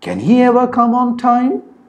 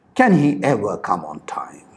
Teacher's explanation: the following polar question said with a falling intonation is perceived as a rhetorical question